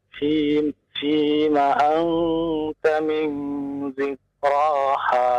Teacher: Karena ini nun bertemu dengan ta ya. Maka menjadi ikhfa, samar bunyinya ya antara nun dengan ta.